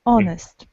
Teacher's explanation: h is not pronounced and the word starts not with h but with o